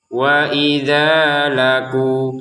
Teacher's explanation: Dengan huruf wawu ini maka kita panjangkan dua harokat juga, sama dengan the. Harokat fathah diiringi alif, harokat dhammah diiringi wawu. Maka ini dua-duanya dibaca dengan dua harokat.